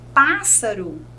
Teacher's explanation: a sílaba tônica é o Pá, é a antepenúltima